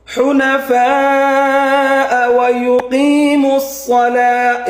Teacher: হা হরফটা গলার মাঝখান থেকে উচ্চারণ হবে